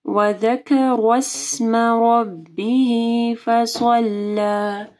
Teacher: ذا کے مخرج کا خیال رکھنا ہے اور را کو موٹا پڑھنا ہے